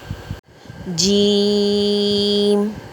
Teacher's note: زبان کا بیچ بالمقابل اوپر تالو سے لگے تو جیم ادا ہوتا ہے۔